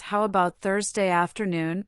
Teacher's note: her voice rises slightly, indicating a question